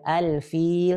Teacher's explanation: lam sukun yang sebelum fa tersebut dibaca jelas, dibaca izhar.